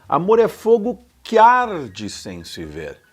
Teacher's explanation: o que se junta com o A do arde, porque o que quase não tem som